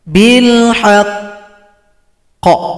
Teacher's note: Cara berhentinya sukunkan, tunggu dua ketukan baru dipantulkan.